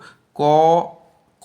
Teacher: ক উচ্চারণ করার সময় খেয়াল করো ক এর সাথে অ আসছে মানে একটা স্বরবর্ণীয় স্বর বর্ণ চলে আসছে ক উচ্চারণ করো দেখো